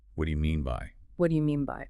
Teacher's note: The stress in the sentence usually falls on the word mean.